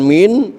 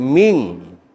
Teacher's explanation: Nun mati ketemu qaf hukumnya ikhfa. Ikhfanya ikhfa abad, artinya ikhfa jauh, suaranya suara eng. Min bukan min tapi ming.